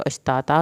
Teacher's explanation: अश्तातल, और यहाँ पर अश्ताता अगर हम वक्फ करेंगे तो अश्ताता करेंगे, और फिर ये तनवीन जो है इसको अलिफ में कन्वर्ट करेंगे। ये बात मैं पीछे भी बता चुकी हूँ कि जहाँ पर तनवीन हो और वहाँ पे वक्फ हो रहा हो तो वो तनवीन के साथ एक अलिफ अटैच हो जाती है, आपने अलिफ साथ पढ़नी है।